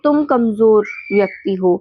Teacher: तुम पर जोर दे रहे हैं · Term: बलाघात